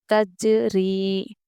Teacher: دیکھیے جزم والا جیم حرف جو ہے حروف قلقلہ میں سے ہے، اس لیے ہم یہاں پر قلقلہ کریں گے۔ ری حروف مدہ ہے، یا سے پہلے زیر، ہم اس لیے اس کو کھینچ کے پڑھیں گے۔